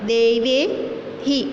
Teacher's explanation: વિસર્ગ પહેલાં 2 માત્રા હોય તો એનું ઉચ્ચારણ હી કરવાનું હોય છે. ત્યાર પછીનો શબ્દ છે ભાનોહો, તો ઉચ્ચારણ પણ એ જ રીતે ભાનોહો.